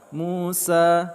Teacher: Musa, mu kita panjangkan 2 harakat, sa juga kita panjangkan 2 harakat.